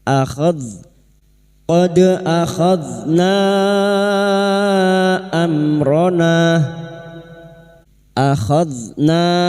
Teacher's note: huruf dzal hati-hati jangan dipantulkan karena bukan qalqalah.